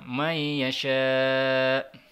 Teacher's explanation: Mat wajib ini adalah 5 harokat